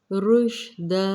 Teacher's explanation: مما علمت رشدا، شین کو منہ بھر کے ادا کیا جاتا ہے، رشدا، دو زبر کو ایک میں کنورٹ کریں گے، الف مدہ کے قاعدے پہ وقف کریں گے، مد عارض کرتے ہوئے رشدا